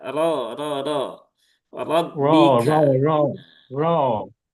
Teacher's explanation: pastikan rnya ditebalkan dengan cara mengangkat pangkal lidah. Kalau a-nya ro begitu itu nanti indikasinya monyong ya.